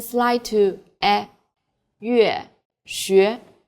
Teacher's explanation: Try to make the yu sound, then slide to e